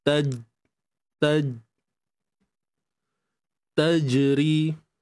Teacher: terutamanya jim ni lah akan menghasilkan lantunan, sifat qalqalah